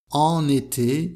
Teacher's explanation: avec la liaison entre an et été